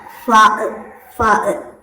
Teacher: താഴെ ചുണ്ട് മേലേക്ക് മുകളിലെ മുൻപല്ല് ചേർന്ന് വരും. അങ്ങനെയാണ് ഫ ഉച്ചരിക്കുന്നത്.